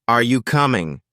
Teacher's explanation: let your voice go up at the end